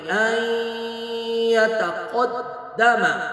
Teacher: ان نون ساکن کے بعد یا ہے، یہاں پہ ادغام با گنہ کریں گے